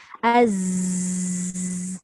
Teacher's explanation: Az tu desiran. Tapi dia tidak ada melepaskan udara. Dia tetap berdesir tapi tidak melepaskan udara.